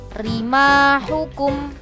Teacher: Contohnya rima hukum, berarti cara membaca ro-nya tipis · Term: ro tarkik